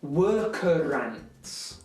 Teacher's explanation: South Walians, people from the south of Wales, tend to roll their R's quite a bit. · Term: rolled R